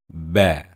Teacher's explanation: Tidak menggunakan gigi sepenuhnya kedua bibir kita. Bertemu dan kita menyebut ba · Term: huruf ba